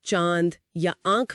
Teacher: हवा एक ही समय पर नाक और मुंह दोनों से बाहर निकलती है। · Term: चंद्रबिंदु, चंद्र बिंदु